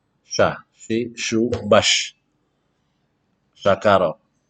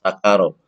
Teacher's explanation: Dengan sin besar yang makhrajnya dari tengah lidah naik sedikit ke atas. Bukan di ujung lidah. Kalau ujung lidah nanti dengan sin kecil.